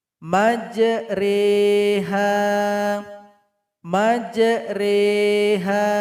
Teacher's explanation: Miringkan bunyi huruf ro-nya dan dipanjangkan 2 harokat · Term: imala